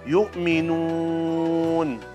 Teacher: Yu'minun, bibirnya moyung, nun dhammah